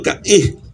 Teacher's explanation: que en el Guayunaiki se pronuncia con la glotal, que ya explicó Lisandro, que es una pausa en la pronunciación